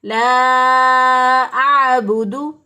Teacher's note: عین کو عین کے مخرج سے وسط حلق سے ادا کرنا ہے لا اعبد. بعض لوگ اس کو پڑھتے ہیں لا اعبدو، بودو کر دیتے ہیں تو بھی غلط ہو جائے گا.